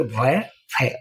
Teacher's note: जो हमारे ऊपर के दांत हैं वो देखिए व फ और नीचे के ओष्ठ से मिलते हैं